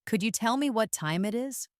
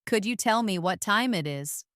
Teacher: The t sound at the end of what often links with the ti sound in time. And then the e in time can link to the it creating a beautiful smooth flow. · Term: connected speech